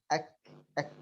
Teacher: من أقصى اللسان مع بين الحنك اللحمي والعظمي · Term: حرف الكاف